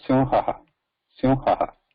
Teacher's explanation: It sounds like a double ha, but the difference is there with the visarga, because visarga lacks that vibration.